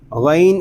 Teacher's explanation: غین الف زبر غو، غین یہ حروف مستعلیہ میں سے ہے، اس کو پوری یعنی موٹا پڑھیں گے